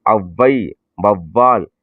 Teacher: அவ் என்பது இரண்டு மாத்திரை அது குறுகி ஒளிக்கும் பொழுது ஒன்றரை மாத்திரை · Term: அவகார குறுக்கம்